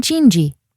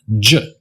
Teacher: This is a d and a zh sound combined in one, j. And again, it's a non-native sound, as you can tell from that geresh.